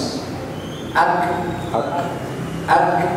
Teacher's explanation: dia syiddah tapi ada hams